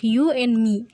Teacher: In the environment of a preceding nasal n and a following nasal m, we simply don't devote speech energy to including the stop sound d. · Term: elision